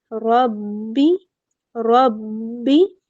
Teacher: را کے اوپر زبر ہے، ہم اس کو پورا اور موٹا پڑھیں گے۔ را کو ہم نے با سے ملانا ہے، را با زبر رب، ٹھیک ہے۔